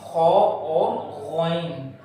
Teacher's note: یہ خو اور غین کی آواز منہ کی طرف جو حلق کا حصہ ہے وہاں سے ادا ہوتے ہیں